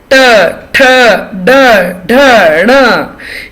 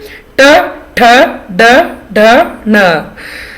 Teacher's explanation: ट में आपकी टंग जो है वो ट्विस्ट होके ऊपर चली जाती है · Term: ट वर्ग